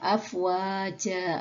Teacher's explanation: fathah tanwin atau tanwin Fatah tersebut menjadi Fatah dan dibaca panjang dua harakat